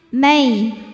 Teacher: May ada huruf lin, sebab ada ya sukun yang sebelumnya berbaris fathah, maka dibacanya lembut atau lunak